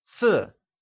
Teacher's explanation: 4 translates to 四 and is said with a falling tone